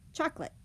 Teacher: We have 3 syllables, but we only say 2. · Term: syncopated schwa